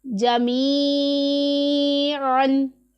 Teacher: یا ساکن ہے، اس سے پہلے زیر ہے تو یا مدہ ہے، اسے ایک الف کے جتنا لمبا کر کے پڑھیں گے، اور عین کے مخرج کا اچھے طریقے سے دھیان رکھیں گے۔ · عین حلق کے درمیان والے حصے سے ادا ہوتا ہے